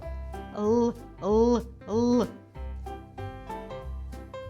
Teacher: Вимовляємо твердо звук л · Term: Твердий